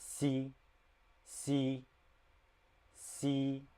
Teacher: So it's more like s sound, but it's like C. It's like a mix between S and SH, which is S and sh, but it's like in the middle.